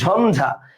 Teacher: তাহলে ঝঞ্ঝা মানে ইয়র উচ্চারণটা ন হয়ে গেছে, ঝঞ্ঝা লিখছে কিন্তু ইয় ঝ, কিন্তু আমি কিন্তু বলি না ঝঝা, বলতেছি ঝঞ্ঝা, তাহলে ই উচ্চারণটা হয়ে গেছে কি ন। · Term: ইয়র উচ্চারণ ন